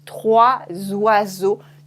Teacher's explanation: Trois oiseaux, we do la liaison, and you can hear a Z sound. Trois oiseaux, to make it sound more smooth.